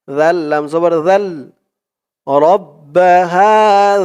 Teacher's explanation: জালের উচ্চারণটা একদম নরম হবে, জিব্বার মাথা উপরের দাঁতের মাথার সাথে লাগবে জালের উচ্চারণ করার সময়।